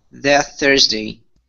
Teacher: Okay, so what we do here to combine, to get rid of that T sound, okay, is we actually use what's called a stop T. We say that Thursday. You're going to combine the T and the TH.